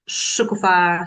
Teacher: Stress on the last syllable.